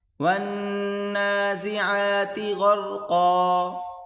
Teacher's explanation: ونّا، زا زیر زی، ونّازی، عین کھڑا زبر عا، ونّازعا، تا زیر تی، ونّازعاتی، غین اور را آپس میں ملا کر پڑھیں گے، غین کو موٹا کریں، را کو بھی